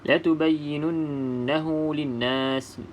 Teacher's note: Nun ada tanda bersabdu, maka di sini perlu kita dengung 2 harakat.